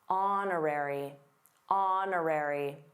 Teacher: did you notice the silent h in honorary?